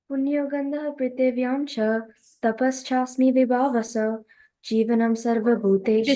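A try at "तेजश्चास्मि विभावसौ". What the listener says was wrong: Tejas Tasmi Vibhavaso, right? Tejas Chasmi Vibhava. So you said Tapas Chasmi. Is it Tejas or Tapas?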